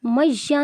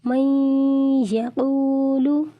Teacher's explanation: نون ساکن کے بعد یا جو ہے یہ حروف یرملون میں سے آ گیا ہے، حروف ادغام میں سے آ گیا ہے، اسی لیے یہاں پر غنہ ہوگا، یہاں پر اخفاء کر کے پڑھیں گے، غنہ کر کے پڑھیں گے۔